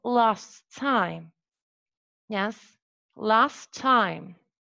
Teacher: the final voiceless alveolar plosive sound in last was omitted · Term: contextual elision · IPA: /lɑːs taɪm/